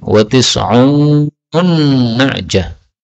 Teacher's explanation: Kemudian pada ayat 23 wa tis'una na'jatan, nun ketemu nun boleh idgham menjadi wa tis'un na'jah